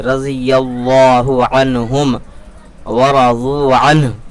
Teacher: رضی اللہ، لفظ اللہ کے لام سے پہلے یا کے اوپر زبر ہے، لفظ اللہ کے لام کو پور کریں گے، یعنی کہ موٹا پڑھیں گے